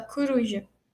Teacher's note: o O do coruja pode virar um U, que é uma vogal mais fechada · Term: espalhamento